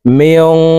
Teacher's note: নুন সাকিনের পরে ইকফার হরফ শিন আসছে, এই কারণে এই নুন সাকিনকে নাকের ভিতরে লুকাইয়া গুন্নার সহিত পড়তে হবে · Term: ইকফা গুন্নাহ